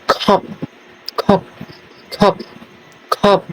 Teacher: the p is unreleased the sound is cut off abruptly